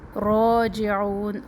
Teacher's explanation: را کے اوپر کھڑا زبر موٹا پڑھنا ہے اس کو